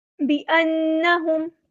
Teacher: اس کو لمبا نہیں کرنا، حرکات کو لمبا نہیں کرتے، بانہم، یہاں پر نون پہ غنہ زمانی ہو رہا ہے